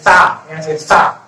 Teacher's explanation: ये वाला सा की ध्वनि कैसे आना चाहिए, हमने जीभ दांतों के पास टकराना चाहिए